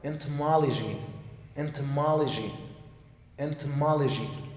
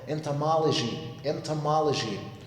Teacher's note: that O, guys, is not pronounced O. It's pronounced as schwa. So please do not pronounce it into.